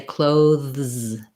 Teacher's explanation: You're going to do your th, clothe, with the voice th, and then you're going to pull back for the z, clothes. And some people use that for sure, but very frequently, that's a challenging combination even for native speakers.